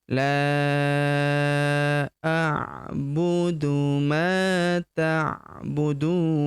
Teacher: La huruf la kita panjangkan lima harakat ya. Karena di atasnya terdapat tanda bacaan panjang lima harakat.